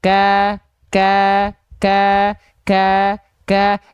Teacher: di awal sebelum kita mengeluarkan harakat a i u-nya itu dia ada percikannya dulu Ka baru muncul Nah percikan nafasnya itu seolah tidak ada atau